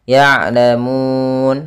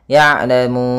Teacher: Kemudian mi, yaitu ada mad tabi'i panjangnya 2 harakat, di lafal mi adanya kasrah bertemu ya. Ya'lamun, pada lafal mun ada bacaan mad arid lis sukun, yaitu kita boleh memanjangkan 2 harakat, 4 harakat atau 6 harakat